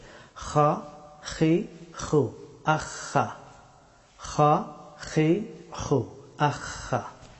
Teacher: হাফটি উচ্চারিত হয় গলার উপরের অংশ থেকে। এখান থেকে খা হরফটি উচ্চারণ করতে হয়।